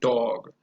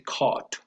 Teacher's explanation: a back vowel it's rounded your lips are in a protruded oval shape for this sound protrude it means that your lips come out as when you